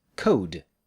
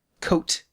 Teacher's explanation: The o in code is longer than the o in coat.